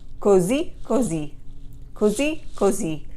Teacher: there's an accent on the last i in both of those words so you need to rise up at the end